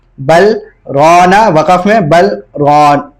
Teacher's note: بل رونا ملا کے نہیں پڑھیں بلکہ سکتہ کریں گے